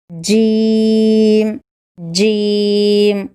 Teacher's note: جیم زبان کے درمیانی حصہ اور تالو کے درمیانی حصے سے جیم نکلتا ہے